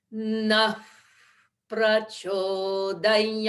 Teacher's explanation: So it's at the lips. Visarga is expressed at the lips because the pa of prachodayat begins also at the lips